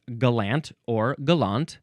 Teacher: We are emphasizing the second syllable here.